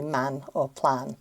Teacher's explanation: Yeah, that's another one where it's a it's a short ah in the English accent